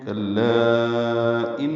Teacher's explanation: یہ نون مشدد ہے، اس میں غنہ ہوگا، آواز ناک کے بعد سے ملے جائیں گی.